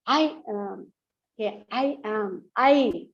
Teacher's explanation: I is given more stress